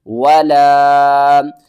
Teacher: اس کو ہم نے 3 الف کے برابر کھینچنا ہے اور الف سے پہلے زبر بھی ہے، حروف مدہ ہے، تو